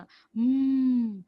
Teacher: since it's bilabial there is no releasing of air out from the mouth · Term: nasal